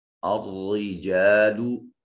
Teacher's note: را کے نیچے زیر ہے، را کو مرقق یعنی بریک پڑھا جائے گا